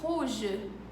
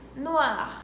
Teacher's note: em francês o R tem um som bem aqui, bem no fundo da garganta